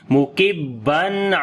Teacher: We make izhar halaki here, the clear sound of noon. Mukibban.